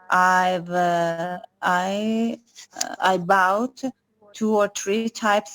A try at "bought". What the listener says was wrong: Bought. The pronunciation is bought, not bout. Bought.